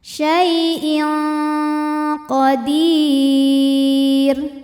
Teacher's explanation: Cara bacanya tanwin disamarkan ke qaf disertai bunyi dengungan, dan bunyi dengungannya besar. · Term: ikhfa ab'ad